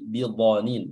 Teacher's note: huruf dhad juga di sini memiliki sifat tebal dan makhrajnya adalah berada di tepi lidah